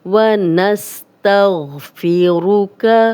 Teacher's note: غین موٹا پڑھیں گے، ونس سین سیٹی والا ہے